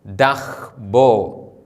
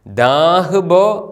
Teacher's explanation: അതിൻ്റെ തൊട്ടു മുമ്പിലെ അക്ഷരമായ ദോലാദിൻ്റെ സ്വരം, ആ എന്ന സ്വരം ഹ്രസ്വമായി ഉച്ചരിക്കുന്നു.